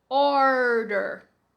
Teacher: é retroflex enrola bastante a sua língua lá atrás da boca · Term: R retroflexo